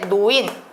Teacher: 노인, 리을이 니은으로 바뀌죠. 리을이 니은으로 바뀝니다. 이런 것들을 두음 법칙이라고 하고요.